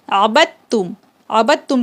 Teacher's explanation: تو اس کے پڑھنے کا طریقہ کیا ہوگا کہ عین زبر ع، با دال تا زبر بت، تا میم پیش تم، عبد تم. یہ دیکھیں دال جو ہے چھوٹ گیا